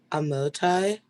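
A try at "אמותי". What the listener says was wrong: Correct the first vowel.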